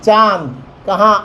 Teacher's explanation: उच्चारण करते समय हवा नाक और मुंह दोनों से बाहर निकलती है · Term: अनुनासिक